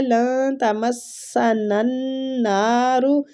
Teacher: نون مشدد ہے، غنہ کریں گے اور نون کو کھینچیں گے